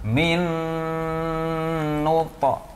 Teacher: minnu adalah idgham bi gunnah. Maka harus dengung yang lama